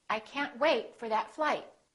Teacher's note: hold the final stop by either holding your tongue for the T or the D